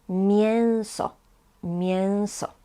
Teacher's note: This E with a tail is pronounced as un, like nasal sound.